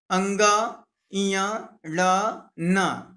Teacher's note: और नंबर 2 लिखा है अंगा, इया, ला, ना, द्विस्थानीय वर्ण है। इनका उच्चारण अपने अपने वर्ग के उच्चारण स्थान कंठ, तालु, मूर्धा, दंत और ओष्ठ के साथ नासिका की मदद से होता है।